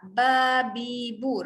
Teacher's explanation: Bibir rapat. Okey, bibir rapat menghasilkan dua sebutan huruf mim dengan ba.